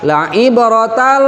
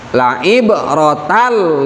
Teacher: huruf lam Itu adalah huruf idgham tapi idgham nya idgham bilagunnah bilagunnah tidak memakai guna